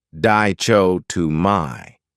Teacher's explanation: This word has 4 syllables, and the stress is on the second syllable.